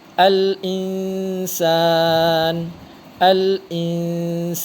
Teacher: Bunyi Nun dibaca samar antara izhar dengan Idgham serta dengung